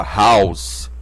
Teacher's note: a transliteração é como h&h do inglês porque H do inglês porque em inglês o h é pronunciado como se fosse um sopro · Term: aspiração forte